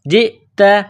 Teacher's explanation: plus کرنا ہے، جیم حمزہ زیر ج، تا زبر تا، جئت، تا کو باریک کرنا ہے، جیم کو حمزہ کے ساتھ پلس کرنا ہے